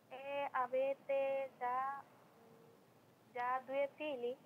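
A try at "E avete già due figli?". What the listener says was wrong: যা এটা টানা যাবে না, avete già 2 figli?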